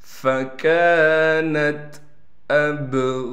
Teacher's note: حمزہ کو با سے ملائیں گے، با پر قلقلہ کیا جائے گا